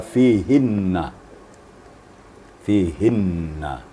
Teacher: Nun musyadadah itu wajibul gunah wajibul gunah Erti wajib berdengung dengung dengungnya sama dengan sebelumnya yaitu dua ketukan atau tiga ketukan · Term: nun musyaddadah